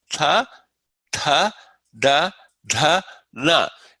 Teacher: dentals with your tongue against the tip of your top row of front teeth